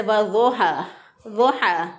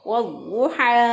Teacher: पेश जिस तरफ पे आएगा वहाँ पे भी होंठ गोल हो जाएंगे, वज़ुहा। तो पेश को होंठों को गोल करके अदा करेंगे। अगर होंठों को गोल नहीं करेंगे तो फिर क्या अदायगी होगी, मजहूल अदायगी होगी।